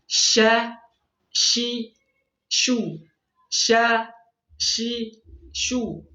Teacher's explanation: tafasyi ya menyebarnya udara di dalam mulut ya sebelum dia keluar ada udara yang menyebar dalam mulut · yang pertama adalah hamz adanya udara yang keluar saat mengucapkannya kemudian sifatnya rakhawah yang mengucapkan huruf dengan suara yang mengalir